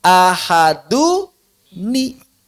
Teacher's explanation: Orang dari awal aja udah ada itu nunnya. Kita sedang mengubah nun tanwin yang asalnya sukun menjadi berharokat. Bukan menambahkan nun baru.